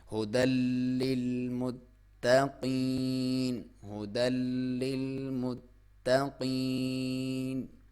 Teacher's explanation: یا ساکن سے پہلے زیر ہے تو یہ یا مدہ ہے، اور اس کی لمبائی 1 الف کے برابر ہے، اگر یہاں پہ وقف کریں گے تو 2 سے 3 الف بھی۔